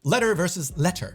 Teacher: Americans are known to soften the letter T in many words, like letter.